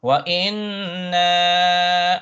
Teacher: Yeah, so in the verse of, after that examples, innahum kanu mujrimin wa inna. Okay, now you have a shadda on a nun and a mad. The na, hold it for 4 harakat